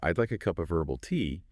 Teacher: So, if I were to say, "I'd like a cup of herbal tea." Putting the emphasis on I lets you know, okay, it's me who wants the tea. But if I stress herbal, that's me being specific about the type of tea. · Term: sentence stress